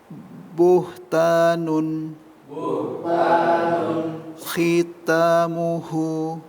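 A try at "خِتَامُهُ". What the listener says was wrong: Hunya pendek. Khitamuhu.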